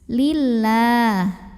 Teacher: dibunyikan secara tarqiq karena huruf sebelumnya lam barisnya kasroh maka bacanya tipis lillah pangkal lidah datar kemudian lah Mad asli atau Mad Thobi'i